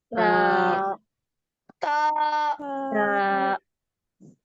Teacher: जबान की नोक को ऊपर के दांतों की जो जड़ यानी जो मसोड़ा होता है उसको टच करेंगे और थोड़ा सा बारीक खींच के पढ़ेंगे